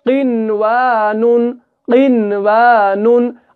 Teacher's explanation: ہم نے نون کو نہیں چھپایا بلکہ ہم نے نون کو ظاہر کیا